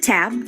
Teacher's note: produced with a tongue at or near the ridge right behind the Upper Front Teeth the alvea ridge is where your teeth meet your gums the